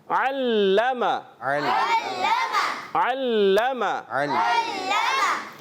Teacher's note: عین حلق کے درمیان والے حصے سے ادا ہوتا ہے